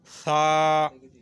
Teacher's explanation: یہ دونوں دانتوں کے درمیان زبان کو پکڑ کر یہ لفظ ادا ہوتا ہے